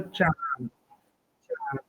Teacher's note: अनुनासिक, क्योंकि नाक से बोला जाता है